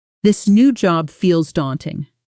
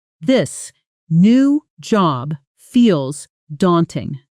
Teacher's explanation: Notice the T in daunting is soft, almost swallowed. The way Americans often do with a t between two vowel-like sounds.